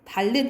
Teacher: 히읗이 탈락하고 니은이 리을로 바뀌어요. 달른 이게 니은이 리을로 바뀌는 게 유마라고 생각을 하시면 돼요.